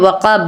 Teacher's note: با پر ساکن کریں گے، آیت مکمل ہو رہی ہے تو وقب، با پورا نہیں کہنا، وقب کہنا ہے، ٹھیک ہے.